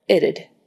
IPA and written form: ɪtəd (it'd)